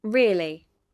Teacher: Rise fall intonation is used to express strong agreement, surprise or emphasis. The pitch rises then falls sharply.